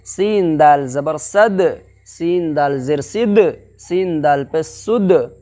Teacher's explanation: मालूम है ना, दाल के ऊपर जज्म है तो उसको पीछे वाले हर्फ से मिला करके पढ़ेंगे। और दाल हुरूफ कलकला में से है, इसलिए यहाँ पर कलकला होगा, यानी इनके मखरज को टक्कर खा करके जल्दी से अदा करेंगे, यानी बोल के तरह, समझे।